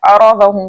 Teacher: रॉ के ऊपर जबर होने की वजह से हम रॉ को मोटा पढ़ेंगे, ज़ात को हम इसके पूरे प्रॉपर मखरज के साथ पढ़ेंगे।